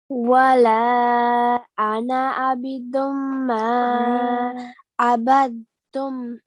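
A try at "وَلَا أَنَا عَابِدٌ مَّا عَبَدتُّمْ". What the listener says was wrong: Now try to prolong the lam for a tiny bit longer. ولا أنا بدم ما عبدتم عبدتم. Now with the meme, here we have a tashdid and a fatha. And we know that we have to do ghunna and stay on it for a little while, okay? بدم ما. عبدتم.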